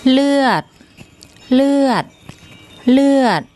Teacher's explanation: The initial consonant is the law-ling L consonant, and the final consonant is the dordek, which becomes an unreleased T as a final consonant. เลือด เลือด เลือด And that word means blood in Thai.